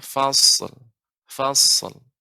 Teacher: Jadi huruf shad karena bukan huruf qalqalah adanya pelambatan ya. Jadi pengucapannya fasl, tidak langsung dipantulkan.